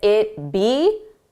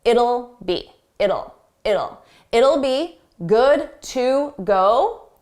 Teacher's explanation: It will sounds like it'll. It's a very soft sound. It's easy to miss that will. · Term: contraction